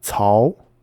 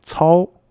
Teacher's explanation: So in the case of Cao Cao, the first character is in the second tone, and the second character is in the third tone. So it's Cao, rising tone, and Cao, which is down and up.